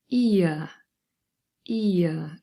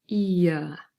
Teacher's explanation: So I've given you an example here, ear. So we have two vowels, e and our schwa, our central vowel sound, and together they form the diphthong ear, ear. And if you say it and you're a little bit more aware of your articulators, you can really feel the movement, ear.